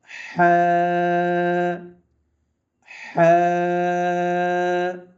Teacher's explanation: জিম সবাই পড়েন আমার সাথে সবাই পড়েন জিম এর পরবর্তী হরফে লক্ষ্য করেন হা গরম বাতাস বের হবে হা কোথা থেকে উচ্চারণ হবে হলকের মধ্যখান থেকে উচ্চারণ হবে হা গরম বাতাস জারি থাকবে